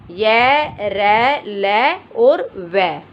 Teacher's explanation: जो हमारी जिह्वा होती है इन व्यंजनों के उच्चारण में कहीं पर भी वो स्पर्श नहीं करती, टच नहीं करती। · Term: अंतस्थ व्यंजन